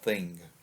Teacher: the English language contains the phoneme linguists call the voiceless dental fricative, or as it is commonly known, the th sound, as in the word thing.